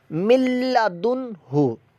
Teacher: ہا حروف حلقیہ میں سے ہے، لہذا یہاں پر اظہار کا قاعدہ لگ رہا ہے، یعنی یہاں بھی غنہ نہیں کریں گے۔ ملا دن ہو کر دیا تو یہ غنہ کر دیا آپ نے، غلط ہے، غنہ نہیں کرنا۔